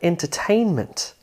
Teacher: Take a 4-syllable word like entertainment. The third syllable has more stress than the other syllables in this word.